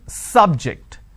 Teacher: I am stressing on the first syllable